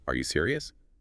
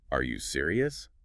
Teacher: If you say are you serious? Flat. It barely sounds like a question. But add that little upward flick at the end.